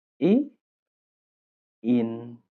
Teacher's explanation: The second person personal pronoun singular is e or in e in the e is short and the in here it's pronounced with quite an open e